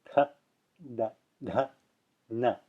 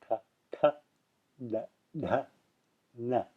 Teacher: So the tongue is curled, and the tip of the tongue is curled back, touching the roof of the mouth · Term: retroflexes